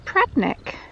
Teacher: We do tend to lose that middle syllable